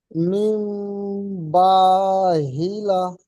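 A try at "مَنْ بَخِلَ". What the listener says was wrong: মিম নয়, মিম, মিম জাবার মাম, বা জাবার বা, মাম বা। এটি হা নয়, খ। খ জের খি, মাম বাখি, লাম জাবার লা, মাম বাখিলা। সাকিনকে, নুন সাকিনকে, বা কে নয়।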